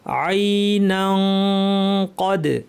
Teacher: যদি মিলিয়ে পড়ি, তানউইনের পর কফ আছে, ইখফা করতে হবে, অর্থাৎ জিব্বাকে কফের মাখরাজে লাগিয়ে দাঁত থেকে গুন্না, গুন্নাটা ভারী হবে কারণ কফ ভারী।